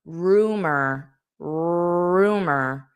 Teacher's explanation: And this end just sounds this o r is just pronounced as. So you have a little bit of a e sound that you can't separate from the r sound. It's so if I were to write it out I might write it out starting with an e and it sounds like rumor rumor.